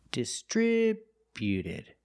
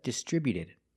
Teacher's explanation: Put the stress on the second syllable only.